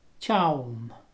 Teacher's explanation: So chaum is very big. It's a strong, broad N. And the tip of your tongue is touching your front teeth.